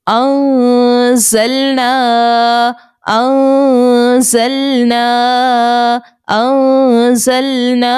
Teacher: جب زا کو ہم ادا کر رہے ہیں تو ہماری جو زبان کی نوک ہے وہ نیچے کے دانتوں کے اندرونی کنارے سے جا کر لگ رہی ہے، اور جو اوپر کے 2 دانت ہیں وہ نیچے کے 2 دانتوں سے ملاقات کریں گے تو ہمارا یہ زا بآسانی نکل آئے گا.